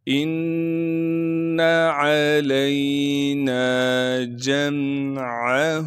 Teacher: جیم کو میم سے ملا دیں گے کیونکہ میم ساکن ہے، عین کو صاف کر کے گلے سے نکالیں گے